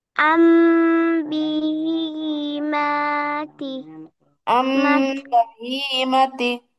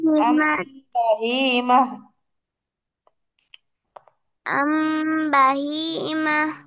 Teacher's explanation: সেক্ষেত্রে এই কায়দাটা তোমাদের মনে রাখতে হবে যে নুন সাকিন অথবা তানবিনের পরে যদি বা হরফ আসে, তাহলে কি করতে হবে? উক্ত নুন সাকিন ও তানবিনের নুনকে পরিবর্তন করে নুনের জায়গায় মিম বসিয়ে গুণনা করতে হবে। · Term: ইকলাব গুন্না